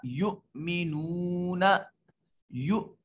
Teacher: حمزہ ساکن ہے جھٹکے سے ادا ہوگا۔ نو واو ساکن ما قبل مضموم واو مدہ۔